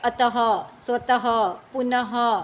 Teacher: विसर्ग का उच्चारण गले से होता है